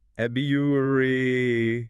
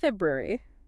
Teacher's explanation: The standard British pronunciation tends to smooth out the transition between the B and the Y by dropping the first R sound, making it sound closer to February.